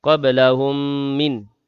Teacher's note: Mim mati bertemu dengan mim. Idgham mislain. Dengung 2 harakat.